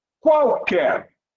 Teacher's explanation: Nós temos o U com som de U, A com som de A e o L com som de W.